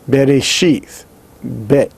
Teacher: it is pronounced as a B, or a hard B, which is a stop, a bilabial stop and voiced